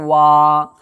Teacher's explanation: واو کھڑا زبر وا، کھڑا زبر برابر ہوتا ہے الف مدہ کے، اس لیے کھڑا زبر کو ایک الف کے برابر کھینچ کر کے ادا کریں گے